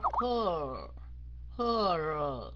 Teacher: Cái âm R phải kéo dài phía sau, không phải là her nha.